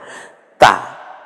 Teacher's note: পাতলা আওয়াজে তা মুখটা একটু দুই দিকে ফাঁকা হয়ে যায়